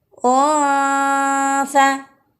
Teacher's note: ditekan ditempelkan dengan ringan pada posisi makhraj sehingga berbunyi ohsa nasi ada dengung di hidung dan ada sedikit udara di mulut